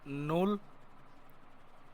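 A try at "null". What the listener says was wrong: নুল, নুল, নুল। আপনি যদি নাল বলেন তাহলে হচ্ছে আপনি এটাকে ভাঙেন। যদি আপনার লেটার যদি ক্লিয়ার থাকে তাহলে এটা নাল বলার প্রশ্নই আসে না। হ্যাঁ, যদি আমি ইউর উচ্চারণ যদি আমি জার্মান ভাষায় যদি বলি, এ, উ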